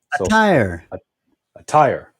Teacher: the word stress on the second syllable